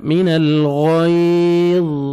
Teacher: زبر ہے، من الغیظ، ٹھیک ہے، ضا کو پر کریں گے، جب سٹاپ کریں گے ضا کو موٹا کرنا ہے